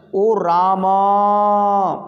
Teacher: जैसे आ, जैसे बोलते हैं ना ओ रामा, बोलते हैं ना पीछे, तो थोड़ा हम पीछे वाले स्वर को कभी कभी जब हम किसी को पुकारते हैं तो पुकारने के समय में वो अंत वाला जो स्वर है वो खिंच जाता है, तो वो 2 से कुछ ज़्यादा का हो जाता है। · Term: प्लुत